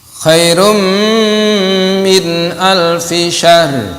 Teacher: idgham bi gunnah, nunnya masuk ke mim. Jadi bukan khairun lagi tapi khairum, karena tanwinnya bertemu mim, masuk ke mim.